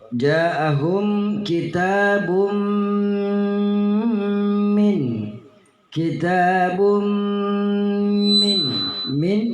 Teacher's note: bahwa harus diidghamkan dhammatain itu dimasukkan ke dalam hurufnya mim, ya jadi kedengarannya adalah bertasdid dan berdengun, ditekan kembali kepada bunyi mim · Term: idgham bi gunnah